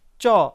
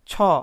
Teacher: তারপর দেখুন চ, বাতাস স্বাভাবিক, মুখের বাতাস বা নিঃশ্বাস স্বাভাবিক। তারপর মহাপ্রাণ ছ, বাতাস জোরে বের হচ্ছে। তাহলে আমরা বুঝতে পারলাম যে যে ধ্বনি উচ্চারণের সময় বাতাস জোরে বের হয় না সেগুলো হচ্ছে অল্পপ্রাণ, আর যে ধ্বনি উচ্চারণের সময় বাতাস জোরে বের হয় সেগুলো হচ্ছে মহাপ্রাণ।